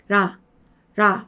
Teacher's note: 라 했을 때 그냥 앞도 아니고 완전하게 뒤도 아니고 중간쯤 어딘가에서 그냥 떠있죠. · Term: 한국어의 리을 발음